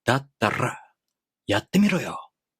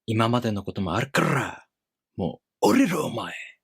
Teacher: the Japanese rolling R is the same as the Spanish one, Italian one, or Portuguese one. It's called a voiced alveolar trill sound. Voiced means your vocal cords here vibrate.